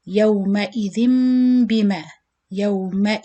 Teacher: This case, as you see, the double kasra here, or the tanween bil kasri, the letter after is ba, so you apply also one of the four rules, the iqlab, because when tanween followed by ba, you apply iqlab, means it changing the sound of the noon sakin into meme